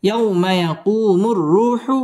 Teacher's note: মদ্দে তাবাঈ এক আলিফ টেনে পড়তে হবে